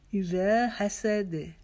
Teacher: रा को एक अलिफ के जितना लंबा करेंगे